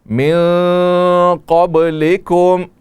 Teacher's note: من قبلکم، یہاں نون میں اخفا ہے. قب قاف موٹا پڑا جائے گا، با میں قلقلہ ہوگا